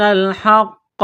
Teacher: وَإِنَّ فَرِيقًا مِّنْهُمْ لَيَكْتُمُونَ الْحَقَّ وَهُمْ يَعْلَمُونَ، کاف کو باریک کرنا ہے، تا کو باریک کرنا ہے، واو ساکن سے پہلے پیش ہے، حروف مدہ واو ہے، ایک الف کے برابر کھینچنا ہے، قاف کو موٹا کرنا ہے، تشدید ہے تو دبائیں گے، سختی کریں گے قاف پر